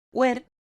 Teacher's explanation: Este es el caso de la palabra huérfano, pues su sílaba tónica, huer, que contiene una vocal tónica, la E, y una átona, la U